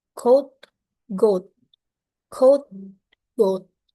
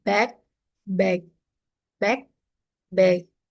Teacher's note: Both are velar plosive, made at the back of mouth. of the mouth with the back of the tongue.